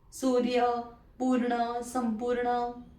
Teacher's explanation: अ थ आपण म्हणतोय आणि मग आपण र म्हणतोय आणि मग व म्हणतोय, म्हणजे व च्या आधी र चा उच्चार होतोय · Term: रफार